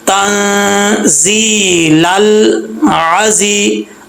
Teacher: अब लाम में कलकला नहीं करना, साकिन जो लाम है इसमें कलकला नहीं करना, लल आजी नहीं पढ़ना। लल, लाम साकिन के ऊपर जब जुबान जाए तो इसके मखरज में जुबान रुक जाए, वापस ना लौटे